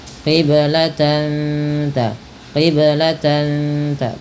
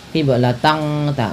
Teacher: Samarkan bunyi suara tan ketika bertemu dengan huruf ta. · Dia dibaca dengan bacaan ikhfa hakiki, yaitu dengan menyamarkan bunyi tannya kepada huruf ta.